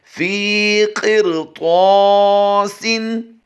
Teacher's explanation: फ़ा या ज़ेर फ़ी की अदायगी करनी है, इसको भी हम लंबा करके करेंगे क्योंकि ये दोनों हुरूफ़ मद्दा से हैं।